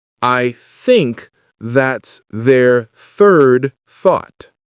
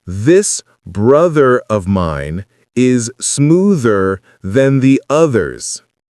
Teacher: There's the voiceless th in think, made only with air, and the voiced th in this, where you use your vocal cords. For both, the tip of your tongue gently touches or goes between your front teeth. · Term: TH sounds